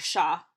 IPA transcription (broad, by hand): ʃa